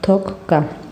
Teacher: Toqqa sözündə söz ortasında qoşa p, qoşa t, qoşa k və qoşa q samitlərinin qaydasını tətbiq eledirik. Birinci gələn samit kar qarşılığına çevrilir. İkinci gələn samit olduğu kimi tələffüz olunur.